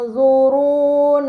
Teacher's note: Pada kata yang zuruna terdapat nun sukun bertemu dengan huruf dha, ini dinamakan ikhfa hakiki, maka nun sukun dibaca secara samar dengan gunnah yang dipanjangkan